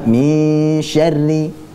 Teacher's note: perhatikan semuanya bahwa ikhfa pada shin ya, bukan sekedar ng saja ya. Tapi memang kita bersiap-siap di makhraj huruf shin. Baik, jadinya bunyinya bukan min.